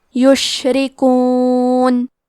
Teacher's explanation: حرف را کے نیچے زیر ہے تو یہاں را کا حکم ہے ترقیق، لہذا ہم حرف را کو پتلی آواز میں پڑھیں گے